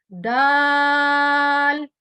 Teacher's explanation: जबान की नोक ऊपर के 2 दांतों के मसूड़ों से जब टकराती है तो वर्ड दाल अदा होता है